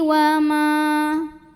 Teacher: karena ada alif didahului baris fathah, maka mimnya panjangkan 2 harokat.